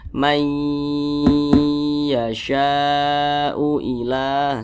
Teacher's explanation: Jadi bunyi nun sukun ini dimasukkan ke huruf ya. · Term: idgham bi gunnah